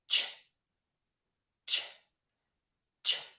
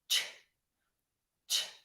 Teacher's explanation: Then once your tongue starts there, it's going to pull back into the middle of your mouth. Your airflow is going to just puff out and your voice is off. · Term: CH sound